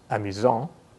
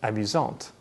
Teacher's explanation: This means that the masculine version is pronounced amusant with a silent T, and the feminine version is pronounced amusante with the T pronounced clearly